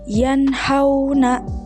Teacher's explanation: membaca nun sakinah atau tanwin dengan terang dan juga jelas tanpa dengung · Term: izhar halqi, izhar halki